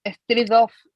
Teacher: Esa N con G suena atrás. Strength suena atrás, o sea, la N se pega atrás en el paladar blando.